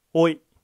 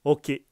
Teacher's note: 일본어 모음 마지막 다섯 번째 글자는 오입니다. 이 글자는 한국어 오와 같습니다만 입술을 많이 내밀지 않습니다. 가볍게 오 하고 발음하시면 됩니다.